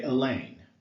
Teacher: an unstressed syllable followed by a stressed one